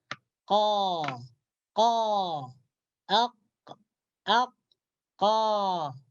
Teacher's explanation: Pangkal lidah kita terangkat ke atas dan suara tidak terkumpul di antara langit-langit atas dan bawah. Dia keluar. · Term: huruf isti'la munfatihun